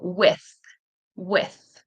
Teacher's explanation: there's no vibration in the throat. Tongue is between your teeth. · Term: th sound